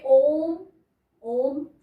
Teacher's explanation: में य ये साइन दिया हुआ है तीन का यानी कि ओम बोलने में तीन गुना समय लगता है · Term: प्लुत स्वर